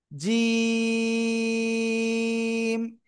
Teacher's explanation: উপরে তালুর সঙ্গে লাগাবো, লাগিয়ে শক্ত করে 1 2 3 আলিফ টেনে পড়বো।